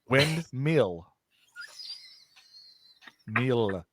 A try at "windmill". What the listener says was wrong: Mill. Windmill. Yeah, because you keep saying like a meal. It's like a windmill.